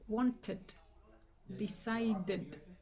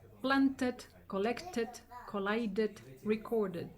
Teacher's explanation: Cuando el verbo originalmente termina en un sonido T o D, por ejemplo, want, que ya termina en una T, para formar su pasado, nuevamente, como todos los verbos regulares, le agrego una ed. Pero en vez de pronunciarla como ed, se pronuncia como id.